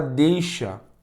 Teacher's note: na palavra deixa o e a vogal o i é semivogal então Aqui nós temos um decrescente